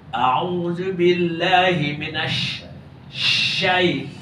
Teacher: Tapi shin bukan hujung lidah. Tengah lidah.